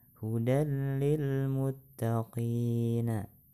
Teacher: nun ia atau tanwin ke dalam huruf idgam bilagunnah yang mengiringinya sehingga jadilah keduanya satu huruf yang berbaris tetapi tidak disertai dengan dengung huruf idgam bilagunnah yaitu lam dan roh nun mati dan tanwin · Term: idgham bilaghunah